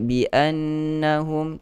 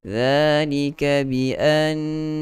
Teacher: Dua harakat dia, gunah dia paling sempurna. Dia gunah dia lebih lagi panjang daripada gunah-gunah yang lain.